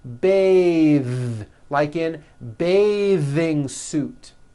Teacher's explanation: when you change it into a verb, to bathe, the vowel changes to an A sound and the TH is voiced.